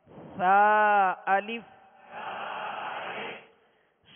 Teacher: سا کو نرمی کے ساتھ پڑھیں گے، یعنی سا اور سین میں فرق کریں گے. سا کو سختی یعنی سیٹی کی آواز میں نہیں بلکہ نرمی کے ساتھ ادا کریں گے.